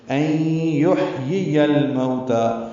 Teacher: ہے، ہم اسے 4 حرکات لمبا کریں گے، علی ان میں نون ساکن ہے اور اس کے بعد یا آنے کی وجہ سے این ہو گیا، ادغام ناقص غنہ کریں گے